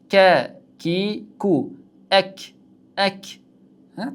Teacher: kaf harfining mahraji tilimizning tubidan sal oldinroq va uning ro'parasidagi tanglar ekan. Ek deganimizda mana shu holatda chiqadi. · Ta harfiga o'xshab biroz jaranglik bor.